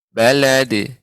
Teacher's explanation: ketika qalqalah pada huruf dal tidak boleh ada hamzah ketika pengucapannya. Balad, tidak balad.